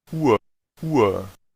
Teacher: Uhr, Uhr, ¿Ven cómo se nota el sonido largo para la U y el sonido de esa A media al final